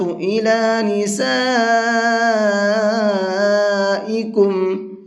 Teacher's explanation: اس بڑے مد کو 4 سے 5 الف کی برابر کھینچ کر کے پڑھیں گے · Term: بڑا مد